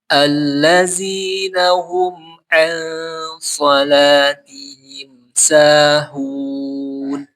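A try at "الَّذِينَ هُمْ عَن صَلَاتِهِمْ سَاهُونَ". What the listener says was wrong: Nun ketemu shad dia ikhfa hakiki, dia tebal dibacanya. Alladzina hum dia tebal. Lebih ditebalkan lagi.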